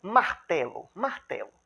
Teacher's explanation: Quando você vai pronunciar a palavra martelo, a energia expiratória da palavra está na sílaba té. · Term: sílaba tônica